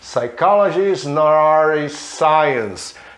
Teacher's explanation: Ao juntar o T com o A fica um som meio R. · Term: links